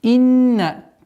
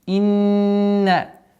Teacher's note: Четкое произношение кесры. Удвоение звука нун. Удержание с назализацией.